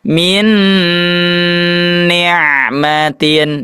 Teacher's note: dimasukkan kepada huruf nunnya yang kedua didengungkannya dengan sempurna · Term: dengungannya